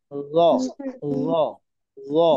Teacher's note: কিভাবে উচ্চারণ করতে হবে? ল >> জিহ্বার আগাটা উপরের দাঁতে নিচে নিয়ে লাগাতে হবে।